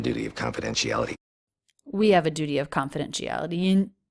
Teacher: The other thing I've noticed about his voice is it's really gravelly. There's a lot of that sound in it throughout his entire sentence.